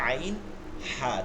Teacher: 2 নম্বর মাখরাজ হলকের মধ্যখান থেকে